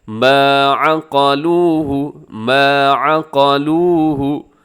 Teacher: لمبا کیجیے گا، اس میں واو مدہ ہے